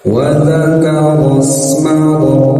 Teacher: sin sukun ya, biarkan mengalir dan jangan terputus suaranya.